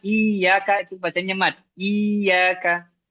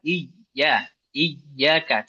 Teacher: Terasa tengah lidah naik ke atas ke makhrajnya huruf Ya.